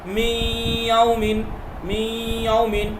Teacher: اس کو تجدید دے دیجئے، اب یہ نہیں پڑھا جائے گا، یہ پڑھا جائے گا لیکن غنہ کے ساتھ، نون غائب نہیں ہوگا بالکل، بلکہ نون جو ہے غنہ بن جائے گا، ناک سے ہوگا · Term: ادغام غنہ